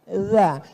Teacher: Letakkan ujung lidah di atas gigi. Atas gigi atas. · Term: huruf dza